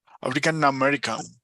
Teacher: Sube un poco en American.